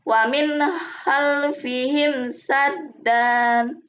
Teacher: Karena terdapat nun mati yang bertemu dengan huruf ho, maka nun mati tersebut harus dibaca jelas.